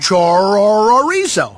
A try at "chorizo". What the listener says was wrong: No, roll your R, like ribs or burrito.